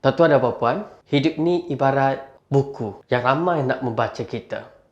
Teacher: penutup tu kita dengan kata hikmah dengan nada yang sangat rendah supaya menjadi satu bisikan kepada penonton